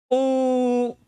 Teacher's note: किसी को जब हम आवाज देते हैं या आपने संगीत में देखा होगा शास्त्रीय संगीत का जो प्रकार होता है उसमें लंबा आलाप खींचा जाता है या रोते समय या हंसते समय जो किसी स्वर का लंबा उच्चारण किया जाता है। जैसे उ ये तीन मात्रा जितना समय जो लगा वह प्लुत स्वर कहलाता है।